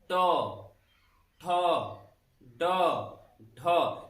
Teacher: जीभ का कुछ हिस्सा टर्न मुड़ रहा है, और मुड़ने के बाद जो खुरदरा भाग होता है उससे टच होता है, जिसको मूर्धा बोलते हैं। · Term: मूर्धा वर्ण